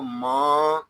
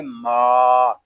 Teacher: میم کو ہم ایک الف تک کھینچ کر پڑھیں گے کیونکہ یہاں الف مدہ ہو رہا ہے. میم کو ادا کرتے وقت ناک میں آواز نہیں جانی چاہیے، اس کو ماں اس طرح نہیں پڑھیں گے، اس کو پڑھیں گے ما.